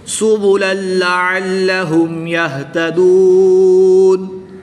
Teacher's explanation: وقف کی حالت میں نون کی زبر کو ساکن کر کے پڑھیں گے۔